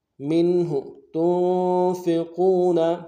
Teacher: تا کو نون ساکن کے ساتھ ملانا ہے، نون ساکن میں غنہ ادا کریں گے